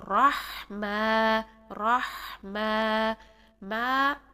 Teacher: मा 2 सेकंड के लिए हम इसको लंबा करेंगे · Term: अलिफ मद्दा